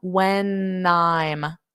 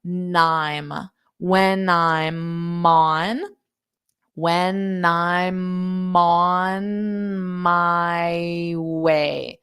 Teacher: So this N for when I open it up, when I'm. So it's like I'm adding an N in front of I'm.